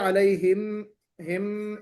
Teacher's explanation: अलैहिम में जो है आपने गुन्ना कर दिया, अलैहिम, हिम इस तरह पढ़ा तो वो भी गलत है जी।